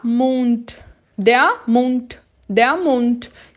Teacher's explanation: Atenção, porque o D no finalzinho tem o som de T. É por isso que eu falo der Mund.